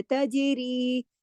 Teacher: پھر دیکھیے تجری، جیم پہ کلکلہ ہوگا، کتب جدن کا حرف ہے اور جزم کے ساتھ ہے